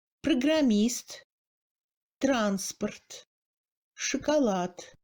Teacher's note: Dans la position du deuxième degré de réduction, toute autre syllabe non accentuée, on entend un E muet.